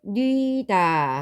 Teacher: 이렇게 누이다라는 형태로 쓰이기도 하지만 이게 축약이 되어서 뉘다라는 형태로 나타나기도 합니다. 이때 단모음 우와 단모음 이가 결합하여 단모음 위를 만들어내죠. 뉘다 하고 단모음으로 발음이 되게 됩니다.